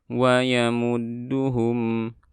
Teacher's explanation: Kemudian ada mim mati bertemu dengan waw izhar syafawi dan ada dal bertasydid, tidak perlu ditekan terlalu berlebihan dan dinaikkan suaranya, ditahan saja di makhrajnya